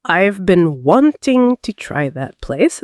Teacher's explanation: the stressed words are been, wanting, try, place.